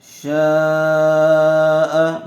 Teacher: شین الف مد زبر شا، حمزہ زبر ا، شاء. مد متصل کا قاعدہ ہوگا، شین کو کھینچ کر پڑھیں گے